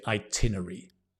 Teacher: Very often actually, British people say itinery. It should be itinerary